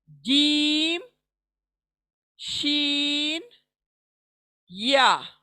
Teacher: जबान का बीच का हिस्सा यूज होता है और तालू को जाकर लगता है, तब जाकर ये 3 लेटर्स अदा होते हैं, और इनको हुरूफे शजरिया कहते हैं हम।